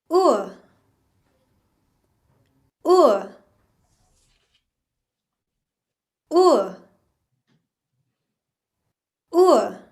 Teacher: Whoop is what we do with our top lip and drop our bottom lip. The back of our tongue is drawn up towards our palate and we've got a vibration in our vocal cords.